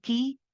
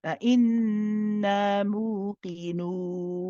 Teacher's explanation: the heavy qaf, and it's the qaf from the soft palate. So make sure this is the one which is further back.